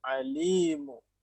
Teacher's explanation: ما في مد يا شيخ، ما في مد، قصر دوا حركة